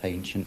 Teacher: We have a hypercorrect H in the word ancient, pronounced as hancient.